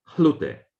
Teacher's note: in Burmese, this S has been not lost, but it changed to aspiration.